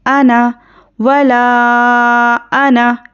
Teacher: नून को नहीं खींचेंगे, अना की तरह पढ़ेंगे। अना करके नहीं खींचना है, अना, वला अना, इस तरह पढ़ेंगे।